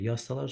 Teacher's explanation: Yazsalar sözünə vurğu düşür A-ya.